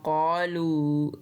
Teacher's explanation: इस क़ालू को भी हमने 3 अलिफ जितना लंबा खींचकर पढ़ना है, क्योंकि उसके ऊपर बारीक मद है